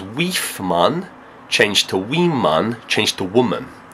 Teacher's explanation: the I sound, the vowel, took on some of those labial qualities of the w, and it mutated and changed.